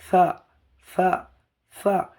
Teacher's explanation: সা উচ্চারণ হবে জিভের ডগা এবং উপরের দাঁতের সামনের অংশ। সা, সা, সা, জিভের আগাটা গিয়ে উপরের দাঁতের সামনে লাগবে।